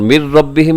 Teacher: من ربہم میں ادغام بغیر غننے کے